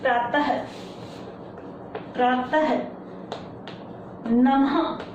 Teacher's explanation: ये विसर्ग उन शब्दों में यूज किया जाता है और ये हा का उच्चारण करता है